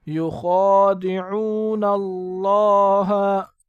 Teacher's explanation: خا کو پر پڑھیں گے اور ایک الف کی مقدار اوپر کھینچیں گے کیونکہ اس کے اوپر کڑا آیا ہے۔